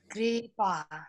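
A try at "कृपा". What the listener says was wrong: Kri is short. Kripa.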